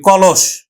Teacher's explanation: এখানে তিনটি বর্ণের হচ্ছে শব্দ মধ্যটা উকার হয়ে যাবে ক লস আমরা দন্তস উচ্চারণ করি না তালব্যস উচ্চারণ করি